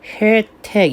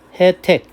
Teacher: 세 번째, 얘는요 예하고 레를 제외하고 이중모음은 이중모음으로 발음하는 게 원칙이거든요. 따라서 예가 원칙인데 에로도 인정한다는 겁니다. 즉 혜택 이게 원칙이지만 혜택 이래도 된다는 것이죠.